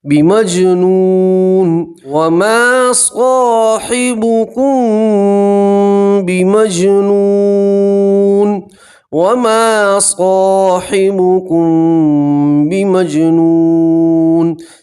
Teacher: میم سکین کی آواز کو ناک میں چھپا کر گننا کے ساتھ پڑھیں گے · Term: میم سکین کا اخفا